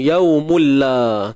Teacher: walaupun dia kata idgham, tapi pastikan tidak ada unsur dia dengung. Yaumulla. Tanwin 99 bertemu dengan lam. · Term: Idgham bila gunnah